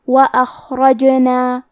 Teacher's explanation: کیونکہ جیم پہ جزم ہے، جیم بھی حروف القلقلہ میں سے ہے تو ہم یہ حرف کو ہلاتے ہوئے یہ کلمہ کو پڑھیں گے · احییناہا، کلمت اخرجنا میں حرف الخاء کی ادائیگی حلق کے اوپر والی حصے سے ہے، خاء حروف تفخیم میں سے ہے تو ہم یہ حرف کو بھاری آواز میں پڑھیں گے